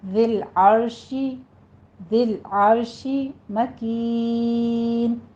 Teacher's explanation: कलकला नहीं करना है, लाम को स्टॉप करना है, रॉ को भी स्टॉप करना है, रॉ मुफख्खम पड़ी जाएगी